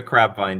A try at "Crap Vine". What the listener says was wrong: Crap. P, that's P, not B.